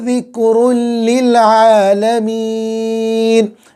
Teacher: عین نکالیں گے حلق کے بیچ والے حصے سے